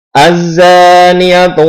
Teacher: Ini zannya dipanjangnya 2 harokat. Jadi tidak boleh pendek. Kalau pendek nanti salah dan mengurangi nilai.